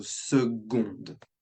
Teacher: We would pronounce the D when second is feminine, so seconde.